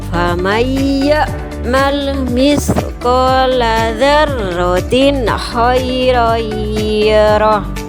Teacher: Ada ya, ada ro, mim, nun, dan wawu. Cara bacanya idgham biunah yaitu dimasukkan sambil berdengung.